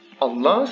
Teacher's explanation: because there is nothing before, the vowel of liaison is maintained and it's a fatha.